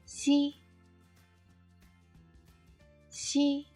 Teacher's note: When you say xi, raising the front of the tongue towards, but not touching the upper gum, and then let the air squeeze out. The vocal cords do not vibrate.